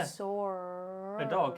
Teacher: when you have a word that ends in a vowel sound like saw that's followed by a word that begins with a vowel sound like a and so our brains feel compelled to stick an r in between the two words so that the transition from one to the other feels a